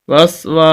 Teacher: واو کے آگے الف ہے، اس وجہ سے ہم واو کو لمبا کر رہے ہیں، اور یہ الف سے مراد یہ الف مدہ ہے۔